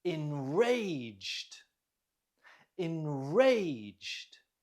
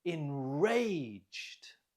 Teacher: Note the stress is on the second syllable.